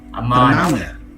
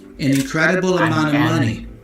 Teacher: remember the of preposition can get reduced to a schwa sound.